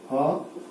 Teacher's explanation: और ह की ध्वनि होती है जिसको कहते हैं काकल्य ध्वनि, ह काकल्य। तो ह की ध्वनि आपके कंठ से सीधे उच्चारित होती है बिना किसी अवरोध के, इसलिए उसको काकल्य ध्वनि कहा जाता है।